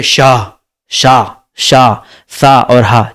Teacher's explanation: इसमें वायु परस्पर घर्षण से निकलती है और प्रतीत होता है कि वायु ऊष्म हो चली है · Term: ऊष्म व्यंजन